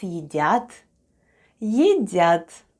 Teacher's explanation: Let's have a look at the spelling of the word ЕДЯТ /yedyat/, which is Russian for "are eating" The first sound is /ye/, then we have /d/, then goes /ya/ and /t/